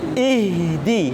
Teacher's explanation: sifat ar-rokhawah. Jangan sampai jangan sampai dihentakkan, tapi dilepaskan, dialirkan.